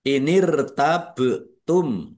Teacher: Ba sukun bacaan qalqalah dibaca memantul ditampakkan pantulannya.